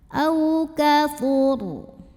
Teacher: Kemudian ro apabila berhenti dibacanya secara tafkhim. Kenapa? Ro-nya ini kan pasti jadi sukun kalau berhenti.